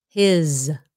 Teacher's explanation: when the s is at the end it often sounds like a z